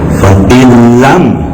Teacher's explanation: Fa'atat unkulaha bi'faini fa'illam, daun sukun bertemu lam idgham tapi bila guna, tidak mendengung, suaranya masuk ke lam tetapi tidak mendengung